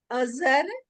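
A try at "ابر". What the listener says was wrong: नहीं नहीं, ज नहीं अबर। वो बे का नुक्ता है, फिर उसके बाद रे है। अब अब्र भी हो सकता है।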